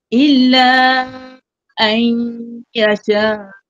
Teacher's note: Illa ayya tu idgham terus masuk dalam huruf ya. Dengung dia.